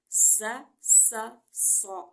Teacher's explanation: सीन में थोड़ी सी सीटी की आवाज़ हम पैदा करेंगे